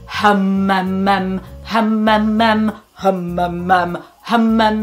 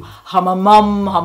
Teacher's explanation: the sound is now in front of my mouth and it's very resonant and round and it sounds deep and I sound relaxed.